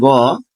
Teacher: গ এটি হচ্ছে ঘোষ অল্পপ্রাণ